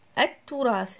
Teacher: التراث، شوفوا كيف هنا إذا أريد أضيف ال إلى كلمة تراث، اللام أدغمت مع حرف التاء اللي هو أحد الحروف الشمسية اللي بدأت به الكلمة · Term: الإدغام الشمسي